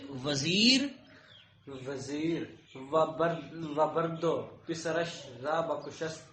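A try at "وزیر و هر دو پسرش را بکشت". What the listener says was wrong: و ہر دو پسرش. وزیر و ہر دو پسرش, یہ بر دو غلط ہے, ہاں غلط ہے, یہ بر نہیں ہے یہ ہر ہے. وزیر و ہر دو پسرش را بکشت کشت لکھا ہے.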